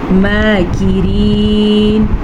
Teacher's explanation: ماکرین، میم کے اوپر کھڑی زبر ہے تو ہم اسے کھینچ کے پڑھیں گے. یہ را زیر والی ہے تو یہ باریک پڑھی جائے گی